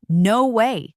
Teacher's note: often with an exclamation and rising intonation